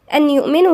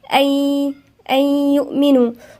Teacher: والنون الساكنة لا تنطق. فاحنا بنعمل ايه؟ احنا بندغم النون بالياء، يعني بنقولها أي، لا تنطق أن يؤمنوا، لا، أي يؤمنوا.